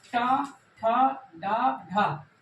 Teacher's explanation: बोलते समय जब जिह्वा ऊपर उठती है और पीछे साइड जाती है, पीछे की ओर जाती है। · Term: मूर्धा